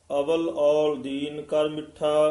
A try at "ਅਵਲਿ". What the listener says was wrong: ਇਹ ਅਵਲ ਨਹੀਂ ਕਹਿਣਾ ਇਸ ਨੂੰ ਕਸ ਕੇ ਉਚਾਰਨ ਕਰਨਾ ਹੈ। ਅਵਲ ਅਵਲ ਔਲ ਦੀਨ ਕਰ ਮਿੱਠਾ।